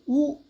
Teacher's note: उ पश्च संवृत का उदाहरण है